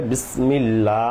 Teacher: বিসমিল্লাহ লাতে এক আলিফ টান